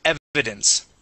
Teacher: the accent is at the very beginning of the word